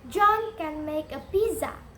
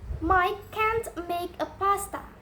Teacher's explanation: Can is usually pronounced can. It is unstressed. And can't is usually pronounced can't. It is stressed.